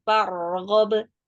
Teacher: Jadi ro lebih panjang durasinya daripada ba yang sukun.